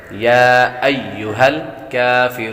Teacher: کافرون کاف پر کھڑی حرکات ہے، تو اس لیے اس کو ایک الف نہیں دو حرکات کے برابر کھینچ کر پڑھیں گے